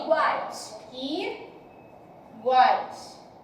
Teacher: Houve aqui a junção de 3 vogais na mesma sílaba. Mais fortes, o A. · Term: tritongo